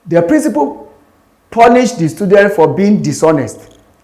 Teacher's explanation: The word dishonest was stress, for being dishonest.